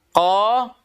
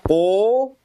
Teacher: Jadi pangkal lidah diangkat tapi mulut dibuka. Qa, tidak dibaca qo. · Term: infitah